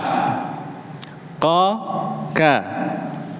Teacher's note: Dua huruf. Jadi pangkal lidah yang paling dekat dengan tenggorokan itu keluarnya huruf qof dan kaf